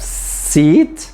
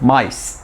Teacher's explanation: So the sa in seat takes longer time than the sa in mice.